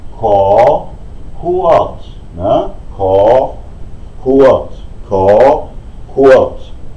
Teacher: Und Kurt hat die Tonbewegung nach unten.